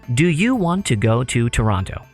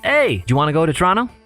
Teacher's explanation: it is completely natural to saydjawanna instead of pronouncing every syllable in do you want to